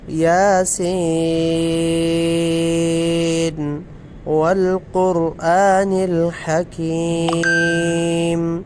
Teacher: یاسین والقرآن الحکیم، قاف اور را کو موٹا پڑھیں گے، اور پیچھے جو یاسین پر مد کا نشان ہے یہ مد متصل ہے۔